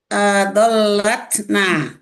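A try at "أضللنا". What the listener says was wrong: adlalna. Adlalna. Dalnya disukun adlalna.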